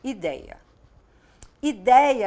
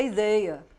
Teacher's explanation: nós falamos com esse som aberto mas em Portugal e em outros países de língua portuguesa a pronúncia ideia é fechada e não é aberta